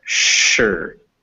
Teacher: it's written with an s but it's pronounced sure with an sh sound